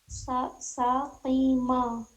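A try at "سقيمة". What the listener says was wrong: دیکھیے جس بھی ورڈ میں یا کہیں بھی پھنسیے نہ پڑھنے میں, کسی بھی کلمے میں, اس کو توڑیے پہلے. دیکھیے غلطی اس میں کس میں ہو رہی تھی, ش پڑھ رہی تھی. اسی ش کو سدھارنا ہے.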